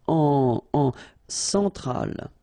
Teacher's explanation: Centrale, remember, E-N nasal, so it goes in your nose.